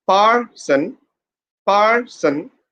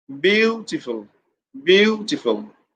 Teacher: syllable as well as the words are noun or adjective then you have to put pressure on the first syllable